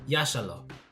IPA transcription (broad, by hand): ˈjaʃaˌlo